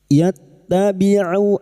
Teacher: Yattabi'u huruf ain jangan tertukar hamzah huruf ain wastul halqi atau tengah tenggorokan